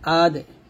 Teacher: বা জিম দাল দিয়ে যখন কলকলা করব তখন বা জিম দাল কলকলা পাতলা হবে